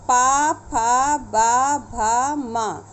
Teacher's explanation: ये आपके दोनों ओष्ठ आपस में मिल करके इनका उच्चारण करते हैं, इसीलिए एक वर्ग में यह रखे गए हैं।